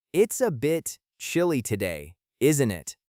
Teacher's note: The word bit ends with a T sound, and a is a vowel. So, they link together to sound like bit {underscore} a. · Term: link the words together